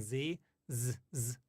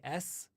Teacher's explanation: say s and Z ZZ back to back you'll notice that when you say z z your vocal cords are vibrating but with s they're not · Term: voiceless